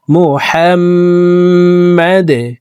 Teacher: হাম ওয়াজিব গুন্নাহ, 3 সেকেন্ড পরিমাণ গুন্নাহ করে পড়ব